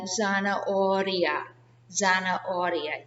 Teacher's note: if the R is in the middle of a word, it's a soft R, like zanahoria. Zanahoria. You hardly hear it.